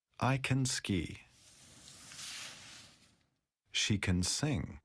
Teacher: we often don't stress can we pronounce can as can in positive sentences I can ski